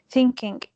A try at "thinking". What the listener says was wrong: Don't say the G. Yes. Because we never say the G in English. No, it is not silent, but we never say it. It is it slows you down when you speak. So when you say I am thinking about you, that is going to slow you down.